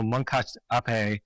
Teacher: I think it might be Moncacht, and they say the T is unaspirated